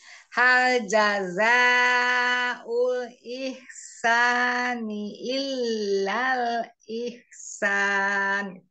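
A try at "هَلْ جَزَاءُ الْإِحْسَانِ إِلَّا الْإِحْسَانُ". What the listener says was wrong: Bagus, tinggal ihsan. Nunnya disempurnakan. Ihsan.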